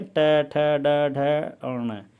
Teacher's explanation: आपकी जीभ ऊपर जाके टकराती है वर्ष से और एक झटके के साथ में वायु बाहर निकलती है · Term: मूर्धन्य